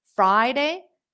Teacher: Friday is a noun stresses on the first syllable